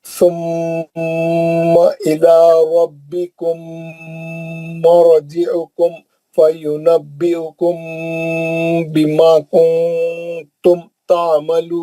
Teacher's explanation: ربکم مرجعکم میں میم ساکن کا ادغام شفوی حرف میم ہے